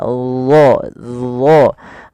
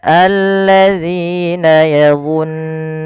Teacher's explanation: Kemudian pada lafal yazunnuna, di sini huruf dha, ya, makhrajnya sama dengan huruf zal, tapi ketebalannya berbeda. Karena huruf dha ini ada 2 sifat yang paling harus yang melekat padanya.